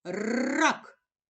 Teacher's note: ми чуємо перший звук р приголосний він твердий ми позначили його однією рисочкою а промов слово ріпа Ми чуємо